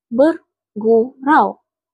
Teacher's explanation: Perkataan bergurau merupakan diftong kerana mempunyai vokal au pada suku kata yang ketiga menunjukkan diftong.